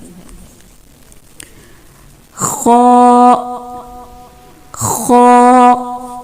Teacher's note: ہا, اس کے بعد خا, خا, اس کو موٹی آواز میں پڑھتے ہیں اور اس کا مخرج کیا ہوتا ہے کہ زبان کے پچھلے حصے کو اوپر کی طرف بلند کرتے ہوئے موٹی آواز میں پڑھا جاتا ہے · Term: موٹا حرف